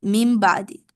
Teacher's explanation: after min, there's a ba. It becomes mim ba'di, like literally M-I-M, mim ba'di. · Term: iqlab